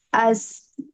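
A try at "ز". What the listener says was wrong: Jangan ada napasnya. Az. Nanti nih yang keluar justru ada napasnya loh. Nggak boleh ada napas ya huruf zai. Ini zainya kita tahan napas karena dia jahar. Yang keluar suaranya aja.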